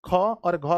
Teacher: ख और घ बोलने में ज्यादा हवा निकलता है। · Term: महाप्राण